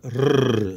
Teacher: the Greeks do roll their r's and it's made with the front of the tongue · The letter rho makes a rrr sound. It is a strong R, rather like a Scottish R, not like an English R.